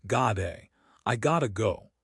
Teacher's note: The T sound changes. In American English, it becomes a flap T. It sounds like a soft D or R, gotta.